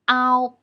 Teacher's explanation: A is the main vowel. We pull our tongue a bit back when we pronounce a here. It's loud and clear, but the tongue position is lower to pronounce o here than we pronounce the simple final o.